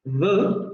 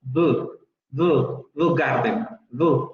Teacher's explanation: con la fricativa dental sonora. Pero ocurre un fenómeno en el acento popular de Londres y prácticamente en toda Inglaterra, en donde esta fricativa se adelanta a la labiodental fricativa sonora. Entonces, en lugar de decir the, ellos dicen the garden, the.